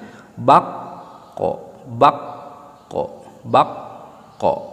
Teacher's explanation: kop itu keluarnya atau makhrajnya atau yang dilibatkannya itu lidah bagian dalam ditempel ke langit-langit.